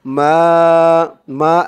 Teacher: মা এক আলিফ টান, জবরের পরে খালি আলিফ